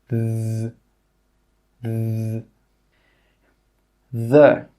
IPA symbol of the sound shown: ð